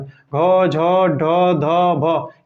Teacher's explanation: घ, झ, ढ, ध, भ, ये सघोष महाप्राण है